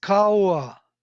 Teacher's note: the consonants are totally eaten up by the vowels in between